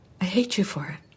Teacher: She doesn't reduce the for even though it's a function word because she wants to emphasize it.